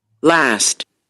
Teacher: last, It's a, like in cat. So it's a vowel that is low and front.